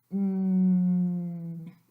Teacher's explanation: Put your fingers on your throat and say, N. You should hear some vibration there because N is voiced.